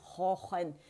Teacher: زبان کی جڑ نرم تالو سے لگتی ہے. خا کی آواز آئے گی خا خن.